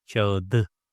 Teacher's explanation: I need to transform te to its relative one, the softer version, de, and it becomes kağıdı.